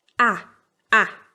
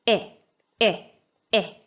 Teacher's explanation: But within each accent, the a sound is always broader, more open than the e sound. By broader, I mean that we open our mouth wider and bring the tongue lower.